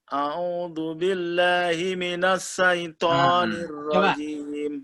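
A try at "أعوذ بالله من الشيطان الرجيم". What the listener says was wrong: Bahasa Arab itu enggak ada minassai. Coba bilang Persyarikatan Muhammadiyah. Bisa enggak bilang Persyarikatan Muhammadiyah? Kalau Persyarikatan Muhammadiyah bisa bilang sya. Kenapa syaitan enggak bisa? A'udzu billahi minasyai, bukan minassai. Bisa bilang Washington kan? Bilang Washington apa Washington? Bisa bilang syai. A'udzu billahi. Jadi syaitan bukan syaitan. Ya, bahasa Indonesia memang setan, tapi bahasa Arabnya syaitan. Ya, jadi syai.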